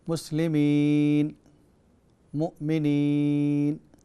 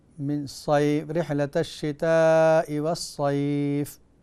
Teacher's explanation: याए मद्दा को मारूफ़ पढ़ा जाएगा और खींचा जाएगा, और याए लीन को मारूफ़ नहीं पढ़ा जाएगा और खींचा भी नहीं जाएगा।